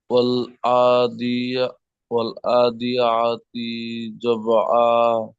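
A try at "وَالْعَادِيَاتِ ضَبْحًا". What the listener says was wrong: তি টান দেবেন না, আ টান দেবেন আর ইয়া টান দেবেন। ওয়াল আদিয়াতি যবহা। যবহা।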